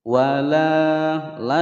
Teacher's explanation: dibaca panjang dua ketukan sebab ada Alif sebelumnya